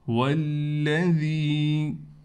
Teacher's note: والذی، لام پر تھوڑا ٹھہراؤ کریں گے، اس واو کو اس لام سے ملا دیں گے، اور ذال کے بعد یا ہونے کی وجہ سے ذال کو ایک الف کی مقدار کھینچیں گے